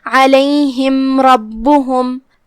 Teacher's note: راء حروف الاظہار الشفوی میں سے ہے، لہذا ہم میم کو ظاہر کریں گے اور بغیر کوئی غنہ کی حکم کو ادا کریں گے · کلمت ربہم میں یہاں راء پہ زبر ہے، لہذا راء کو بھاری آواز میں پڑھنا ہے. پھر حرف الباء ہے اور اس پہ تشدید ہے، لہذا 2 حرف کی مقدار میں ہم با کو پڑھیں گے.